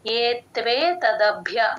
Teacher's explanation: కలిపి చెప్పాలి అలా కాదు కాకుండా ఏత్వే తదభ్య అలా ప్లేన్ గా చెప్పకూడదు ఏత్వే ఏత్ అని ఒక్క సెకండ్ ఆపితే వత్తు కూడా క్లియర్ గా వినిపిస్తుంది ఏత్వే తదభ్య భ కింద మహాప్రాణం య వత్తు రెండు వినపడాలండి ఏత్వే తదభ్య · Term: సంయుక్తాక్షరం